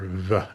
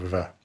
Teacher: Uh that Greek beta represents a fricative B. Uh so, basically a little bit like a V, but like in Spanish, you make that with both of your lips together.